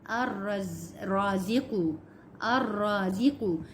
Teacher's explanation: ہم نے لام کو چھوڑ دیا، الف کو ہم نے را سے ملایا